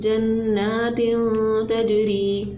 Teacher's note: जन्नातिन, ताजीम ज़बर तज, जन्नातिन तज, रोया ज़ेर री, जन्नातिन तजरी, रो के नीचे ज़ेर होती है तो हमेशा इसको क्या करते हैं, बारीक करते हैं रो को